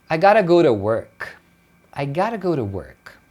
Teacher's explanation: Você vê que o T ou ele some ou ele vira um R. Geralmente é o que vai acontecer na fala natural do dia a dia.